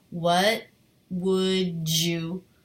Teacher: an ending D plus the word you that often comes across as a J sound